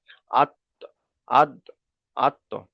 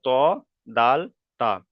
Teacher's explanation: জীভের আগা এবং সামনের উপরের দুই দাঁতের গলার সাথে লাগিয়ে উচ্চারিত হয়